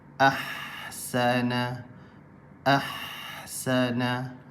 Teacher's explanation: huruf ha pedas keluar daripada tengah kerongkong